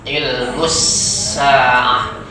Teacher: Tidak, bukan ilmu sa'ah, tapi ada tasdidnya di sana, ada alif lam. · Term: alif lam syamsiyah